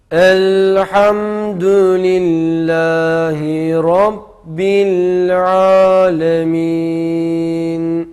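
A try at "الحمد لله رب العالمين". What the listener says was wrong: Rabbil alemden hiç ses çıkmayacak. Bili gibi ses çıkmayacak. Bil alemin. Dedin.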